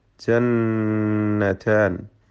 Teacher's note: ശദ് നൽകപ്പെട്ട നൂനിനെ മണിക്കണം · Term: നൂൻ മുശദ്ദ